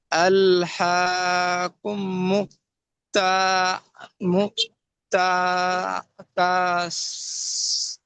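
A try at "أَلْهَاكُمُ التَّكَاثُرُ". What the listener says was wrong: আর ধীরে ধীরে ওরকম থেকে থেকে পড়ছেন কেন? বানান করলেন, এজরা করলেন, সব হলো, এবার একসঙ্গে পড়ুন। আল হা কুমুত তাকাসুর। তাকাসুর।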